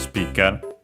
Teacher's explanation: the accent for speaker on its own is on the P, just like in English